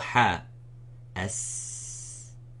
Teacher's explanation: So the flowing of the air coming, it is sifat al-hams, the whispering.